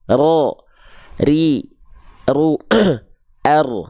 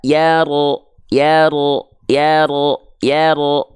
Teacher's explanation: Takrir itu apa? Dia bergetar namun tidak berlebihan getarannya. Dia tuh punya sifat takrir.